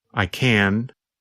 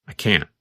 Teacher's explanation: when we say the positive form we pronounce the letter N longer the n Sound n n n lasts longer than in the